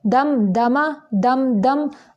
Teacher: اظہار شفوی ہے ظاہر کریں گے صرف میم کو لمبا نہیں کریں گے